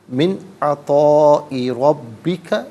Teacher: من میں نون ساکن ہے، اس کے بعد عطا میں عین آ رہا ہے حرف حلقی، تو یہاں نون ساکن پر غنہ یا اخفا نہیں کریں گے، اظہار کیا جائے گا۔ من عطائی ربک، یہاں رکیں گے تو ربک پڑھیں گے۔